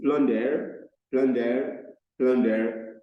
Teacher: The U there is that vowel sound, the letter V turned upside down, and the ER letter that we have there is the short sound, the letter E turned upside down.